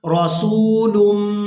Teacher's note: جب لام کو میم مشدد کے ساتھ ملائیں گے تو غنہ کریں گے